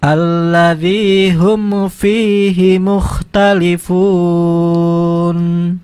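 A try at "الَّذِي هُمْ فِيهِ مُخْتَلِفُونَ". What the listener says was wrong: Ya, hati-hati. Ada kesan mau tawalud tadi tuh ditahan. Mau mantul, ya.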